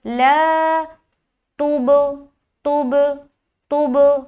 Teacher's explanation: کیونکہ با کے اوپر سکون ہے. تا سے جب با ملے گا تو مل کر جدا ہوگا اور قلقلہ والی صفت پیدا ہوگی